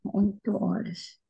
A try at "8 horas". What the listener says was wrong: the horas, yeah, horas. There's never a h in Portuguese. There's no h. H sound is only in English or in other language. There's no h in Portuguese.